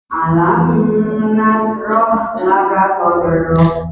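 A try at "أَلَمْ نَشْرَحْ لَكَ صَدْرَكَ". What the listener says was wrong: Ulangi, alam nashrah, mim ketemu nun tidak, mim sukunnya tidak usah ditahan. Alam nashrah.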